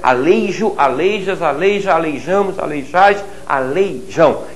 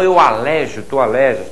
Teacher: Não transforme o ditongo desses verbos em uma vogal.